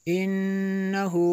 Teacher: नून मुशद्दद है, गुन्ना होगा